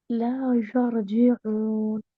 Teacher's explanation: वाव और आइन के ऊपर जो पेश है होंठ गोल करिए